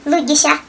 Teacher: все вот такие мягкие звуки «с» в коми-языке читаются как «щ», как в слове щетка. Они супер мягкие, гораздо мягче, чем русские. И вот везде, где встречается, вернее, вам хочется прочитать как «си», да, «си», надо читать «щ», «щетка».